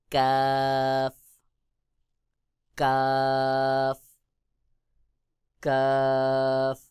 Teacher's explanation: জিহ্বার গোড়া থেকে একটু সামনে আগে বাড়াইয়া তার বরাবর উপরে তালুর সঙ্গে লাগাইয়া কাফ উচ্চারণ হবে